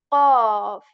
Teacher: we are going to raise the back part of our tongue, okay, to make it sound heavier. Qaf. It takes a bit of effort, okay?